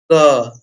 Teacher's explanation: हमारा क का उच्चारण आ रहा है कंठ से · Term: क वर्ग